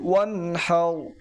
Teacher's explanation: হা এখানে কি নরম বাতাস বের হবে